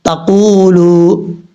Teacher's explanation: نون ساکن کے بعد تا آ رہا ہے، حروف اخفا میں سے یہاں پہ نون ساکن کا اخفا ہوگا، 1 الف کی مقدار غنہ کیا جائے گا · قاف حروف مستعلیٰ میں سے پر پڑھیں گے اور قاف کے بعد واو مدہ ہے